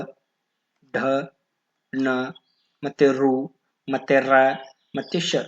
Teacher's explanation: ನಾಲಿಗೆಯನ್ನ ಹಿಂದೆ ಚಾಚಿ ಬಾಯಿಯ ಮೇಲ್ಭಾಗವನ್ನ ಸ್ಪರ್ಶಿಸುತ್ತವೆ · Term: ಮೂರ್ಧನ್ಯಾಕ್ಷರಗಳು